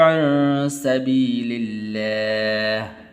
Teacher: لفظ اللہ کو باریک کر کے پڑھنا